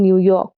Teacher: unstressed followed by a stressed syllable, as in New York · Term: iambic